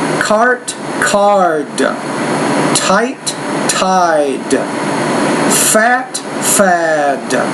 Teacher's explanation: T that the bow low before should be a little shorter when you have a D at the end the vowels longer so then I'll say this cart card type tide fat fad